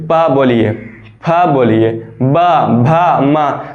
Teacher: दोनों होठ आपस में सट रहे हैं।